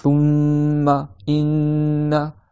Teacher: Quand ils ont une shadda, tu dois nasaliser, tu dois mettre dans le nez, nasaliser. Quand ils ont une shadda, tu dois nasaliser le mim ou le nun.